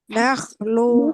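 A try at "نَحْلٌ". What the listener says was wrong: নাহলুন, নাহলুন। হাটা খুব স্পষ্ট উচ্চারণ হবে, নাহলুন।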